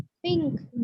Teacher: छुपा दे रहे नून की आवाज को, बिल्कुल हम मखरज पे नहीं लगाना है जबान को